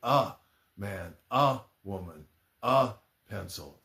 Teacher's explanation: most of the time, at least here in the United States, people pronounce it like the schwa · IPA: /ə/